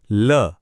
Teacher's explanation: पहला है पार्श्विक यानी ल। इसे बोलते समय हवा जीभ के साइड से, बगल से निकलती है। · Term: पाश्विक